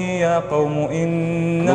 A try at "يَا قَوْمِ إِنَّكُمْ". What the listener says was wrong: مزبوط عدلتها أنت، خليك زي ما أنت لا أنت قريتها غلط في الأول بعدين عدلتها بعدين رجعت للخطأ مرة ثانية. قومي بالكسرة.